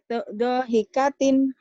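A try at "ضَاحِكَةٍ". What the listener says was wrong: Donya panjang. Dohikatin.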